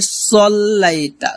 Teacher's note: আলা আলি মুহাম্মাদ মুহাম্মাদ। তারপর কামা সাল্লাইতা, কামা সাল্লাইতা হবে না, হবে সল্লাইতা, সদ মোটা করতে হবে